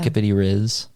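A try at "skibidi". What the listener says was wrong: It's not skippity, by the way. It's skibbity.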